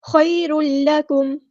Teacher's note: را کے اوپر دو پیش ہے اور آگے ہمیں لام دکھ رہا ہے، تو یہاں پر ہوگا ہمارا ادغام کامل. خیر لکم، مکمل ادغام ہوگا.